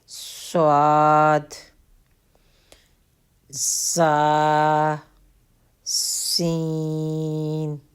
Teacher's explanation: یہ زبان کی نوک اور دونوں دانتوں کے اندرونی کنارے سے ادا ہوتے ہیں · ان کو بولتے وقت، پڑھتے وقت سیٹی کی آواز آتی ہے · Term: سیٹی والے حروف